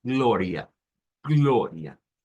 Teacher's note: Ya que el acento se hace sobre esa O y la A final, ¿verdad? Que es esa A media en donde va hacia atrás, digamos, nuestra lengua.